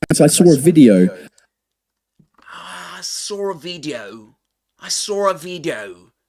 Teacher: the intrusive R appears between saw and a making it sound like sora video.